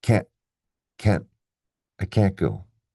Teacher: Do you hear the t very clearly? Not really.